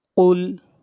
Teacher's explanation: قاف حروف مستعلیہ میں سے ہے، قاف کو موٹا پڑھیں گے۔